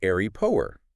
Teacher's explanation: They simply slam the glottis shut right where the alveolar plosive should be. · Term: glottal stop